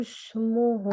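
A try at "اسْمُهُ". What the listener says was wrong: আপু, আপনি হুস বলতেছেন, সিনে চলে যাচ্ছেন। আস বলেন, আস হুস।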